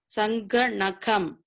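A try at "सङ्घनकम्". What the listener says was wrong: You are reading Sangha Nakam, that is wrong. Then you are saying Nakam, that is wrong. It is Sa. short vowel A. Sangha, it is A. The important thing to be noted is you cannot stretch the vowel unnecessarily.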